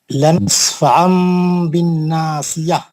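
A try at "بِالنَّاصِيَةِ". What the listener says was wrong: بالناسیہ کا نون کا غنہ بھی اچھا کریے. نون ساکن نہیں ہے وہاں پہ.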